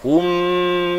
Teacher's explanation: Mim ini mesti balik ke makhraj mim masa dengung dia. Hum mi panjangkan dengung masa sebut mim.